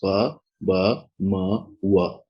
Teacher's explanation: the two lips are firmly close together, and the sounds ba, ba, ma, wa are produced. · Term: bilabial sounds